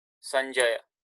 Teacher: This is the palatal nya, nasal sound.